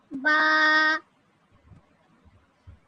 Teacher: बा दोनों होठों का तर हिस्सा मिलाने से बा अदा होता है। तो इसमें जब हम अपने लिप्स को बंद करेंगे तो आप देखें आपके सामने होठ बंद है।